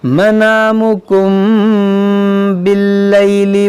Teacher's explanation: میم ساکن کے بعد با, یہاں پر اخفائے شفوی ہوگا